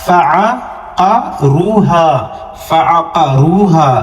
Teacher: ہا کے بعد جو الف ہے وہ مدہ کا ہے 2 سیکنڈ تک کھینچیں گے